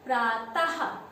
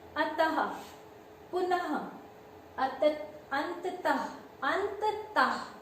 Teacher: जब हम इसका शब्द बोलते हैं तो पीछे ह की ध्वनि आती है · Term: विसर्ग